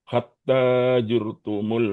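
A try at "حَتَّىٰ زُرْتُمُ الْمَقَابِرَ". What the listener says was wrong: Hatta zur tumul zur za zur bukan jur za huruf za Pak Cara pengucapannya sama seperti huruf Z ya. X, Y, Z.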